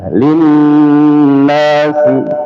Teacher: nun bertasydid ya dengungannya dua harakat ya